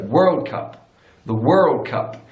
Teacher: in American English they put the stress on the first word so world cup the world cup so stresses on the first